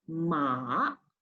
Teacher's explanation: you have to lower down your tone, then going up again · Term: third tone